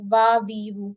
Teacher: वाव में भी एक गलती होती है, वाव में लोग फा का मखरज यूज करके वाव को पढ़ते हैं, यानी सामने वाले दांतों को नीचे लगाते हैं